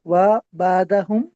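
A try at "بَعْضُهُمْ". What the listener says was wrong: बादू, बादा नहीं, बादू,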